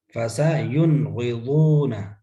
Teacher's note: غین حرف حلقی، نون کو واضح کریں گے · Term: اظہار حلقی